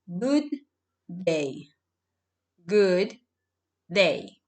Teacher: you connect both letter D and you create a long sound like a long day